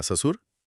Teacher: लोगों ने इसे साधारण स बना दिया जिसके लिए जीभ को बस दांतों के पीछे रखना होता है